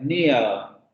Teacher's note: en la variante británica no va a ser una variante rótica.